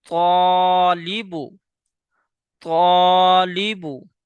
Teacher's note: یہ الف موٹا ہوگا کیونکہ الف سے پہلے والا حرف موٹا ہے۔